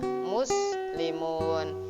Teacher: Musnya dibaca tafhim, artinya ditebalkan, maksudnya dijelaskan sinnya itu